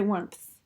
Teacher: you close off the M with the P, and then you can transition into the theta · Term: voiceless stop